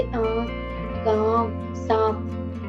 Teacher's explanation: अनुनासिक यानी इसका उच्चारण नाक और मुंह दोनों की सहायता से किया जाता है